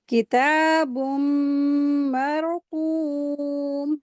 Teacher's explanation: तो रा को हैवी पढ़ेंगे। कॉफ हैवी लेटर है और उसके साथ वाव मदिया का रूल अप्लाई हो रहा है, तो इसको हैवी करके पढ़ेंगे